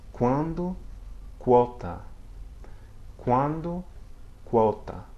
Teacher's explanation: Before other vowels such as A or O, it sounds like KW